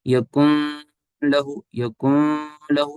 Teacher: کوئی غنہ نہیں کیا ہم نے، ناک میں کوئی نیزل ساؤنڈ نہیں ہے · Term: ادغام بلا غنہ